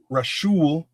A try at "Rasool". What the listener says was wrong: The H is the H is silent.